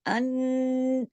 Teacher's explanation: इस पे नून पे तशदीद है जिसकी वजह से दो नून है, तो इधर गुन्ना होगा बड़ा अकमल, अन, ऐसे पूरा इसका गुन्ने का हक अदा होगा।